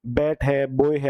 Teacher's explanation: दोनों होठों से मिलाने से ही बी की साउंड आती है